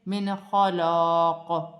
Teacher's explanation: قاف میں قلقلہ پیدا ہوگا کیونکہ قاف حروف قلقلہ میں سے ہے